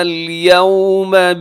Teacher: یوم واؤ لین ہے، واؤ ساکن سے پہلے زبر ہے، واؤ لین، اب یہاں اس کو مجہول پڑھنے سے بچائیے گا.